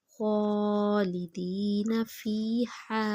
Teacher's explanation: ہا کی آواز حلق سے نکالیں گے